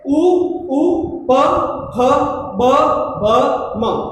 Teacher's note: जब हम इनका उच्चारण करते हैं तो हमारे ओष्ठ पर कंपन होता है, ओष्ठ हिलते हैं, तभी ये ओष्ठी वर्ण कहलाते हैं।